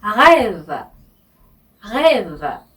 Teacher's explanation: 네, 한국 사람들이 제일 힘겨워하는 발음인데요. 네, 아침에 가글 하실 때 목구멍에서 하시잖아요. 네, 이 목구멍에서 나오는 이 소리가 바로 R의 발음입니다.